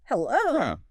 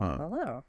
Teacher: The intonation goes flat and drops at the end like this. Hello. It's just a downward vocal fall. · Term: flat falling tone